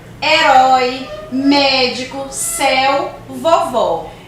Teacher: ele indica um timbre aberto herói médico céu vovó o som já fica mais aberto é · Sempre que o acento agudo estiver nas vogais A, I, U, representa ali uma vogal tônica, ou seja, a sílaba tônica está ali naquela sílaba. Quando eu coloco o acento agudo nas vogais E, O, ele também indica tonicidade, mas ele indica um timbre aberto.